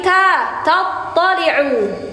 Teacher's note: Jadi ketika ta memang di ujung lidah, cuman dia tipis. Pangkal lidahnya turun. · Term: ta tipis